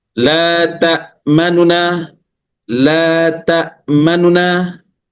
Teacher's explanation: ikhtilas ini dengan membaca cepat damah pada nun yang pertama tanpa mengidghamkannya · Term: raum atau ikhtilas